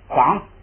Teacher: 记住有上加字前加字，那个第一调送气都变不送气，所以呢变成了嘎